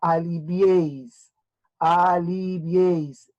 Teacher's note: van a juntar la i la e y la i simple porque la vocal que más suena es la e y como la e es la vocal abierta tiene más sonido que las otras dos que están a su costados por lo tanto se agrupan en una sola sílaba y forman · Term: triptongo